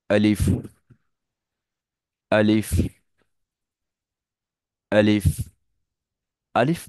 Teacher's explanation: এক হচ্ছে দুই ঠোঁট মিলবে না দ্বিতীয় হচ্ছে লম্বা টান হবে না